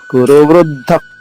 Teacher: ఇక్కడ రెండు ధాలు వేరు వేరు ఒకటి అల్ప ప్రాణి ధ రెండోది మహాప్రాణి ధ కింద దానికి ఒత్తు ఉంది అందుకని మహాప్రాణి ఒత్తు రాసుకోండిమ్మ మీ బుక్స్ లో